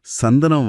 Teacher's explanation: சந்தனம் வார்த்தையில நு அப்புறம் த. உங்க நாக்கு பற்களோட அடிப்பகுதியை தொடுறதை நீங்க உணரலாம்.